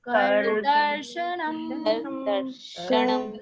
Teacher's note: मकार अधूरा है तो हमारा मुख बंद हो जाएगा